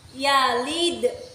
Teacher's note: hukum bacaannya qalqalah kubro, karena ada dal sukun di akhir kata. Cara membacanya itu dipantulkan keras